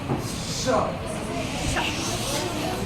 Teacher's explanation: तालव्य श का तालु से उच्चारण करना चाहिए, यानी बोलना चाहिए हमको श। तालु में जा करके घर्षण करके जब आएगा तो इसको तालव्य स बोलते हैं, तालु के कारण।